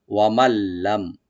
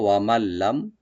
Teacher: তো ওয়া ওপেন রাখবেন, মিম ওপেন রাখবেন, নুন সাকিনের পর যেহেতু লাম আসছে এখানে, তো এখানে এদগাম হবে কিন্তু গুন্না ছাড়া, উইদাউট গুন্না এদগাম করব আমরা। নুনটাকে লামের সাথে মিলাবো, এখানে নুনটা এখানে প্রনাউন্স হবে না